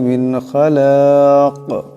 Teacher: নুন সাকিনের পরে খা আসছে, ইজহারে হরফ, এখানে বেলাগুন্না পড়তে হবে। খালাক এখানে দম সারলে এই কাফটা সাকিন হয়ে যাবে, কলকলা হবে।